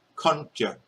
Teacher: This is aspirated ka.